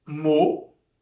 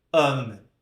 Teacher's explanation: foneticamente, nós temos aqui 2 sons diferentes. Um som mais fechado, mo, e um som mais aberto